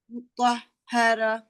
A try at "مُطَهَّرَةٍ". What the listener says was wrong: مطہرہ. راہ نہیں، راہ موٹا را.